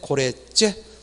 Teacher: 고래와 재가 만났을 때 고래째, 뒷소리가 된소리 되죠